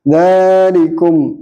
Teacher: Ilallah, ini mad aridi, haknya disukun karena wakaf, jatuh setelah mad tabi'i, jadi mad aridi. Dzalikum, dal fathah panjang, ini bacaan mad tabi'i